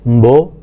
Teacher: When the schwa is dropped, we hear mbo, which means kiss